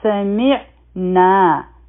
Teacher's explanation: میم او عین به یوځای شي، عین به د حلق د مینس نه وایو. سمعنا، نا حرف مده دی، دوه حرکه به راکاږو.